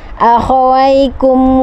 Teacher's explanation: mim mati bertemu dengan wawu, ini idhar syafawi, jelas terang di bibir, langsung.